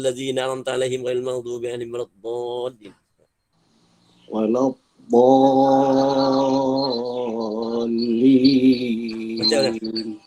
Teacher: Jadi sebutan dia itu dia seluruh tepi lidah menekan ke geraham atas kiri atau kanan. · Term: hufdhan